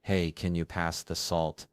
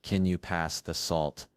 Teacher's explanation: So when you end on a lower note, it sounds more serious.